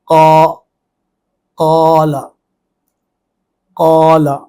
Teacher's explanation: الف کی آواز جو ہے وہ بھی پر اور موٹی ہی رہے گی۔ جیسے قال، قا، قا، کیونکہ قاف پر ہے، قاف کے اوپر فتحہ ہے، اور اسی فتحہ کی آواز کو جب لمبا کرنا ہے تو اس سے الف پیدا ہونا ہے۔